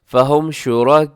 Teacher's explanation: मद्दे मुत्तसिल वाजिब। 4 सेकंड तक लंबा कीजिएगा।